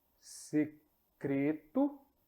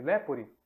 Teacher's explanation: E como eu falei longo ele se fecha e o e breve ele se abre